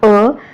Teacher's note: अ या वर्णाचा उच्चार करतो तेव्हा जिभेचा मध्यभाग हा थोडासा वर उचलला जातो आणि समान असतो ओके मग असा हा जिभेचा समान जिभेचा मध्यभाग समान असणारा एकच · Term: मध्यस्वर